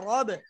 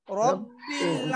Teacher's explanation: র ফাতহা বা সাদ্দা রব র টা মোটা হবে